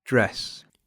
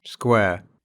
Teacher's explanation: Первая пара гласных – это краткий как в слове dress, и долгий как в слове. square, Эти гласные отличаются только длиной, и в узкой транскрипции оба обозначаются символом эпсилон. По тембру они близки к открытому русскому как в слове «эму».